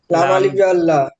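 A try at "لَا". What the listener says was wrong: লাম আলিফ নেই লাম্লা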